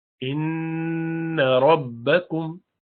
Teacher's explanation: नून मुशद्दद है, गुन्ना करेंगे